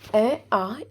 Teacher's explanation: अ आ इसका उच्चारण स्थान कंठ से होता है · जब अ को बोलते हैं तो आवाज कंठ से आती है